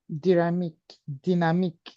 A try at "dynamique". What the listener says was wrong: Yes, dynamique.